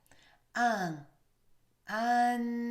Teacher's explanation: the back of your tongue going up and it will stop all air flow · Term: French nasal sound